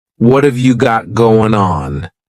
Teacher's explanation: what and have are going to be pushed together